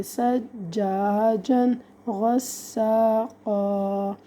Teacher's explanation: نون تنوین کے بعد حروف حلقی میں سے غین آ رہا ہے تو ہم یہاں پہ غنہ نہیں کر رہے